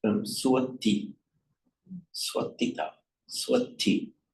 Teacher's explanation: where you get an S either at the end of a word or before another consonant, the S becomes pronounced as a T.